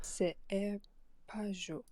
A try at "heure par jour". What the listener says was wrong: Right, I'm just kind of hearing like a silent R, like par jour almost. When we want heure par jour. Of course, if you're speaking quickly, yeah, some of these sounds get dropped, right? But especially with the rate that you're speaking right now, I'd expect those to all be realized fully.